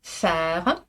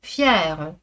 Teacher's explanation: Faire pour le son dur, fier pour le son mouillé, palatalisé.